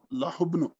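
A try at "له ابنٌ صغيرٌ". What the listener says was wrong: جی لہو بنن، لہو بنن صغیر، یعنی دو پیش پڑھیں گے، لہو بنو نہیں پڑھیں گے. یعنی جہاں دو پیش پڑھے جا سکتے ہیں وہاں آپ نے دو پیش واضح کر کے پڑھنے ہیں، اور یہی پریکٹس ہے آپ کی.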